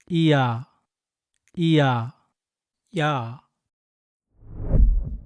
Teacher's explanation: a sound made by quickly saying E and Ah together